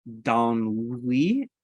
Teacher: so you get the nasal vowel and uh the n sound